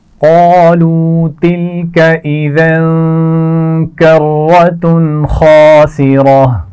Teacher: کرتن، را موٹی پڑی جائے گی